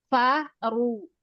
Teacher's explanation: Fa-nya tipis, ru-nya tebal.